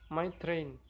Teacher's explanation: R voiceless following T in train.